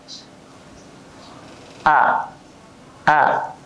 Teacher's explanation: makhraj huruf hamzah letaknya di pangkal tenggorokan